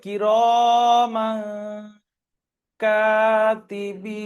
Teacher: তানবিনের ইজরা করবেন, তানবিনের পরে হুরুফে ইকফা 15টি অক্ষরের মধ্যে কাফ এসছে, তাই তানবিনের আওয়াজকে নাকে তুলে একালি পরিমাণ গুণনা করে পড়তে হবে, একে ইকফা বলে।